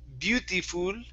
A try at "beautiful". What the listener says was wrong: relax your mouth a little bit okay you're pushing too hard on those vowel sounds